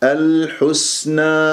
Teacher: والسين ساكنة صفير، من أحرف الصفير، أحرف الصفير ثلاثة، الصاد أقواها السين ثم الزاي، ويجري فيها الصوت والنفس، الحسنى أقف بما الطبيعي حركتين لأنه ألف ساكن قبلها نون مفتوح.